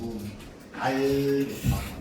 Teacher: 우리가 알 발음해보면 아 발음하다가 알 발음해보면 혀 끝이 위로 딱 붙은 상태에서 알 이러면서 혀의 양옆으로 공기가 지나갑니다. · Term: 흐름 소리